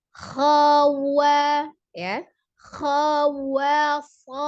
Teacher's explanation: Tapi jangan juga wa-nya terpengaruh dengan huruf yang lain, harus terbuka jadi wa-nya jadi khala gitu, tidak ya. Jadi tetap dimonyongkan dengan sempurna untuk bunyi wa-nya.